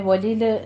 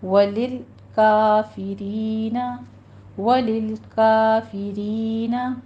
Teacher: لام پہ قلقلہ نہیں کرنا، نرمی سے پڑھنا